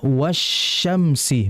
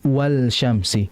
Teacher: Karena huruf shin ini bagian hukum yang disebut dengan idgham syamsiyah, sehingga huruf lamnya tidak terbaca melainkan pada huruf berikutnya dimasukkan langsung, sehingga dibaca wasyamsi bukan wal syamsi.